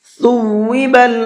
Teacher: سین میں ہلکے سے سیٹی ہوتی ہے، اور سا کے اندر بالکل بھی سیٹی نہیں ہوتی ہے